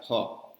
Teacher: ये जो ऊपर का फ है इसमें दोनों होंठ सट जाते हैं, तब ये आवाज निकलता है फ।